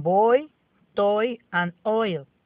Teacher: The third diphthong is oi, as in boy, toy, and oil. This is a combination of O and E, as in the picture. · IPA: /ɔɪ/